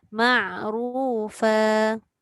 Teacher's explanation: Dia asal masuk ain tapi dia tekan kuat terpergi dekat ghain. Jangan kuat sangat tekan dia. Tekan ke bawah.